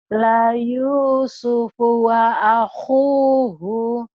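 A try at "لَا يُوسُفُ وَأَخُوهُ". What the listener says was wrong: Layu la Yusufu wa akhuhu. Hu-nya pendek ya, Bu, ya.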